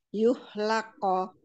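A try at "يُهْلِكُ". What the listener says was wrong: Bukan lako, tapi lakko. Ah, kofnya itu masuknya cepat, lalu mantulnya itu nggak pakai fathah, tapi dipantulkan saja. Ah, dia pantulannya itu karena makhraj yang lepas. Lakko, lakko. Jadi nggak perlu lakko, gitu nggak perlu.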